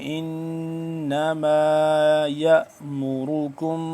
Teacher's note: نون مشدد ہے، اس پہ غنہ کریں گے